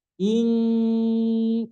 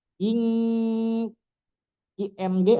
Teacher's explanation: kalau hidungnya dipijit itu akan bunyinya hilang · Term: ikhfa